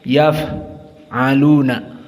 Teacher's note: fa sakinah dalam keadaan sifatnya hams, yaf'aluna. Maka jaroyan an-nafs inda nutq, di saat dibaca dan disukunkan keluar nafas.